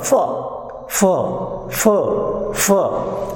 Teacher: lower lip goes towards the direction of upper lip, narrow passage is there is not a complete blockage of the air, and the noise is heard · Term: fricatives